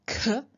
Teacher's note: Then we have k, which is unvoiced but aspirated. So aspiration means that you add a puff of air, so to create the contrast between k and k.